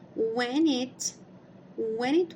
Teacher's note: como a gente tem uma consoante e na próxima já é uma vogal a gente também consegue fazer ah transformar essas duas palavras numa só